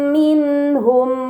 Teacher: nun sukun bertemu dengan huruf Ha ini dinamakan izhar halqi maka nun sukun harus dibaca secara jelas